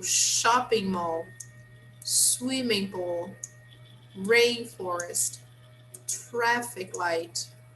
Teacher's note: the stress happens on the first part or on the first word